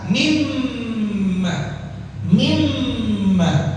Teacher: Kalimat mimma yang pertama mimnya bertasydid. Jadi ditahan.